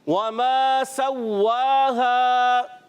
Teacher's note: واو ادا ہوتا ہے ہونٹوں کی گولائی سے